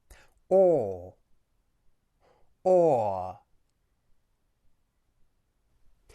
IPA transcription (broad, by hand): ɔː